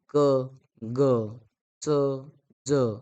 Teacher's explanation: अल्पप्राण जे आहेत उच्चारा उच्चारात हवा कमी बाहेर पडते